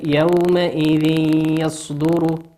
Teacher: تنوين أتى بعده حرف الياء، والياء من حروف الإدغام بغنة يغن بمقدار حركتين